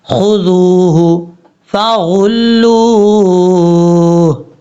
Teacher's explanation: اب یہاں پر خا حروف مصالحہ میں سے ہے، اس کو پر پڑھیں گے اور لام کے بعد جو واو ہے اس واو کو لمبا کریں گے کیونکہ یہ واو مدہ ہے